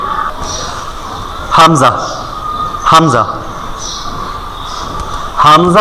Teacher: একেবারে হলকের শুরু হইতে, হলক মানে কণ্ঠনালী, কণ্ঠনালীর শুরু হইতে হামজা